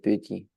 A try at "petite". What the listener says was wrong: Tu as fait une petite erreur ici. Comment tu me prononces ça? Petite. À la différence, quand tu l'as comme ça c'est quoi? Petit et avec un E.